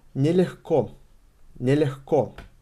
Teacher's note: We pronounce g as h.